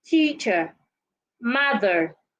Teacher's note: to articulate the short sound do not open your mouth the Sher sound is a closed sound some people say it's a weak sound it means that you